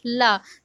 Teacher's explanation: पार्श्विक व्यंजन होता है ला क्योंकि जब हम ला बोलते हैं तो हमारी टंग मुड़ जाती है थोड़ा सा, और जो उसमें वायु होती है वो दोनों किनारों से निकलती है, तो दोनों पार्श्वों से निकलती है, इसीलिए इसे पार्श्विक व्यंजन बोलते हैं।